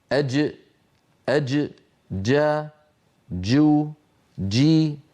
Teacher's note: أما الجيم الفصيحة الصحيحة التي كانت العرب تنطقها زمن النبوة من وسط اللسان، شديدة يعني محبوسة الصوت، مجهورة يعني محبوسة النفس